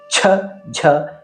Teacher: 2ನೇ ಮತ್ತು 4ನೆಯ ಅಕ್ಷರ ಮಹಾಪ್ರಾಣವಾಗಿದೆ. ಛ, ಝ ಹೆಚ್ಚು ಗಾಳಿಯ ಸಹಾಯದಿಂದ ಹೇಳುವುದರಿಂದ ಮಹಾಪ್ರಾಣವಾಗಿದೆ.